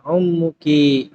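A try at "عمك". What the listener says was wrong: ummu atau ammun? Perhatikan kalau ummun ibu itu pakai hamzah, kalau paman pakai ain. Jadi kalau dibuang harokatnya antum harus ngerti ini a atau u.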